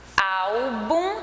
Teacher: então a penúltima ela tem uma tonicidade maior então ela é paroxítona